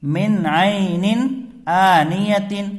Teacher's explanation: یہاں نون ساکن کے بعد حروف حلقی میں سے عین آ رہا ہے، تو یہاں غنہ نہیں ہوگا